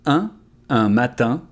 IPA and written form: ɛ̃ matɛ̃ (Un matin)